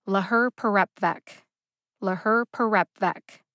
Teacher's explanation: the second syllable her gets the secondary emphasis and the fourth syllable rep gets the primary emphasis both syllables get emphasized give the syllable rep the most emphasis · I think they sound very similar in emphasis when I say them, but the intended pronunciation is that rep gets the most emphasis. I feel like the primary emphasis on rep sounds both staccato and louder than the other syllables.